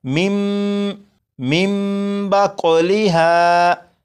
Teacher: जब नून साकिन के बाद बा है तो इस नून साकिन को मीम से बदलकर गुन्ना करके पढ़ेंगे और ये लिखा हुआ है मिन मिन, लेकिन नून साकिन के बाद बा है तो इस नून को मीम से बदलेंगे और गुन्ना करेंगे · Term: इकलाब